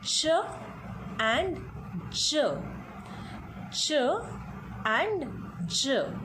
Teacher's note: Then the next sounds are affricates. So there are 2 affricates only, ch and j